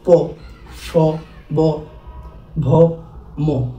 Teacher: আমাদের ঠুট থেকে যে ধনিগুলো আমরা উচ্চারণ করি